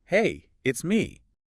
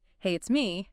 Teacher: And if you went up at the end, hey, it's me. That would sound like a question, like you're unsure if the person knows who me is.